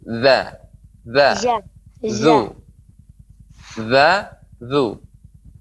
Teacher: Lidah kita lengket dengan gigi seri.